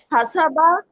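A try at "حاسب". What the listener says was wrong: हसाबा नहीं कहना, हासाबा, हासाबा, इसको ऐसे ही बोले। अगर आप ये मिस कर देती ना अलिफ, ये पूरा टेबल बदल जाना था, ठीक है?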